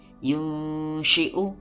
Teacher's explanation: Nun mati bertemu shin dibaca ikhfa, samar, dan dengung.